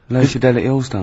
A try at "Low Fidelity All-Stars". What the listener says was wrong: Yeah, Low Fidelity, because you went Low Fidelity. No, it's just you didn't know your mouth wide enough.